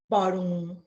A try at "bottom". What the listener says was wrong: So make the m sound longer. No, you have to make the vibration sound. Do you feel the vibration in your neck?